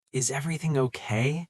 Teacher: It's that soft rising intonation at the end that invites them to share.